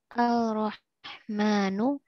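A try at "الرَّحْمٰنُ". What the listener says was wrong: Sekali lagi, yang pasti yang mana? Al atau Ar?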